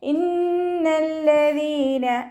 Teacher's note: ലാമിന് ശ്രദ്ധ 2 ഹർഫ് ഉച്ചരിക്കുന്ന കനം കൊടുക്കണം, പക്ഷെ മണിക്കാൻ പാടില്ല.